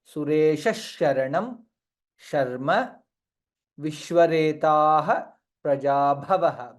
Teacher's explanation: visarga followed by shakara, hence it will be Sureshah sharanam. Additional shakara comes there.